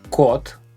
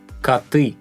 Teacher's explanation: For example, a cat is kot, but cats plural is коты. The letter is the same O, but the sound changes from O, like in kot, to A